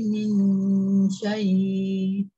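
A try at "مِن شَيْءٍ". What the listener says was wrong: hamzahnya macam kurang bunyi min syai'in dia macam dia tekan sikit lah, bukanlah terlalu tekan, dia ada bunyi sikit syai'in.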